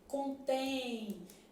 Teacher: Então esse M aqui ó ele tem som de semi vogal Mais especificamente tem som de i né contém por exemplo é o mesmo que acontece em amavam